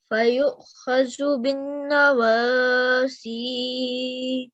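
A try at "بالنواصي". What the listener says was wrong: Okay, this noon here needs to be held for a few seconds.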